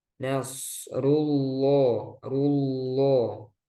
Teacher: Ru, jadi bukan ru, tapi ru. Di sini lafaz jalla Allah dibaca tebal.